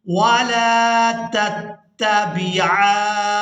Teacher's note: عین کو ہم نے کھینچتے ہوئے نون مشدد کے ساتھ ملانا ہے اور نون مشدد پر غنہ کریں گے۔ عین نون کھڑی زبر مد، آن نون زیرنی، ولا تتبعان سبیل الذین لا يعلمون۔